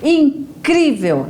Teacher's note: Se for na penúltima sílaba, ela vai ser classificada como paroxítona. Então, na palavra incrível, né, nós pronunciamos aí com mais força, com mais intensidade o cri